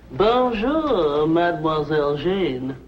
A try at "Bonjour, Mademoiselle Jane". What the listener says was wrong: That's very good. Except for the mwah. Must be soft. Mwah.